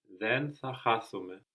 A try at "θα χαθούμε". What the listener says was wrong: Good, but like in χαθώ, no, we will accent the ending. So then θα χαθούμε.